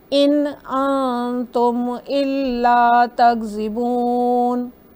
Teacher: इनको हम क्लियरली कहेंगे क्योंकि उसके बाद अलिफ है, जबकि नून सकून के बाद ता है तो हम इस सॉफ्टर और लॉन्गर कहेंगे।